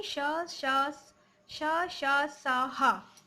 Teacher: इनका उच्चारण एक प्रकार की रगड़ या घर्षण से उत्पन्न ऊष्मा वायु से होता है। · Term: ऊष्म व्यंजन